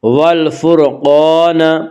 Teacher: قاف کو پر پڑھیں گے، قاف حروف مستعلیہ میں سے ہے، حروف مستعلیہ 7 ہیں جن کا مجموعہ خص ضغط نقز ہے، یعنی خا، صاد، ضاد، غین، طا، قاف، ظا، یہ 7 حروف ہمیشہ ہر حال میں پر پڑھے جاتے ہیں۔